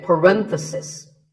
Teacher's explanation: If you talk about just one bracket, you say parenthesis. The stress is on ren.